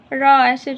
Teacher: र जो है लुंठित और प्रकंपित है